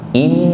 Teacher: Sampai terasa dengung yang nyaman di rongga hidung, di al-khayshum. Ditahan sampai terasa dengung yang nyaman di rongga hidung. Kalau cuma inna sebenarnya itu sudah berdengung, namun kurang sempurna, kurang lama.